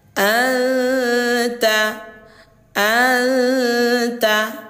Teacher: Anta disamarkan suara nun sukun ke huruf ta disertai dengung. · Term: ikhfa hakiki